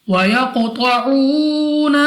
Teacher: قاف مستعلی میں سے ہے اور قلقلہ میں سے بھی ہے تو موٹا بھی پڑھیں گے اور ہمارے مخرج میں جنبش سی ہو، یعنی ہمیں اپنی آواز واپس لوٹتی ہوئی سنائی دینی چاہیے۔